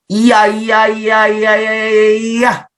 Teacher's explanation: 반모음 플러스 가 합쳐져서 만들어지는 이중모음이다 라고 보시면 됩니다. 그래서 여러분들이 이와 아를 빨리 발음해 보세요. 이야 해서 되는 게 이중모음 야입니다